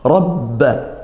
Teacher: ro tafkhim karena fathha